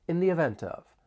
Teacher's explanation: In this case, we're going to use the because the next word begins with a vowel sound, the event. We can also link the final consonant sound in event with the vowel sound in of. · We can also link the final consonant sound in event with the vowel sound in of, in the event of.